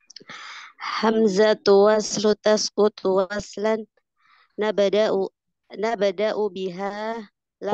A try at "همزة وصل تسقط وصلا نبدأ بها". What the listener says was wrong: Hamzah enggak dengar Hamzah همزة وصل تسقط وصلا